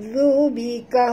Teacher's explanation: huruf dhal sentil lidah, menyebutnya mesti keluar hujung lidah